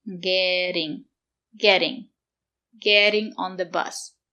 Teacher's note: The letter T is between two vowels. We pronounce it as D. Getting. Getting.